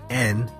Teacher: you are blocking airflow by pressing your tongue against the back of your upper teeth